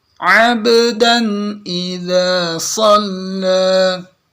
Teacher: Ini qalqalah ya. Ini sukun ba-nya, bukan di fathah. Jadi kadang qalqalah sampai kedengaran seperti berharokat fathah.